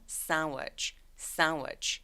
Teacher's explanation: 그래서 sandwich라고 해도 되지만 sandwich라고 D소리 삭제.